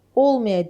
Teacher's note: İnkarlıq olduğu üçün vurğu birinci hecanın üzərinə düşəcək.